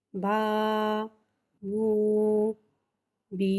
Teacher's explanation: الف سے پہلے زبر آ رہا ہے یعنی کہ الف مدہ ہو رہا ہے. الف مدہ کو ایک الف یعنی 2 حرکات کے برابر کھینچ کے پڑھیں گے